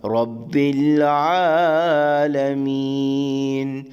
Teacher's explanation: را کے اوپر زبر کی صورت میں را کو موٹا ادا کریں گے، آگے عین حلقے درمیانی حصے سے ادا ہوگا، رب العالمین۔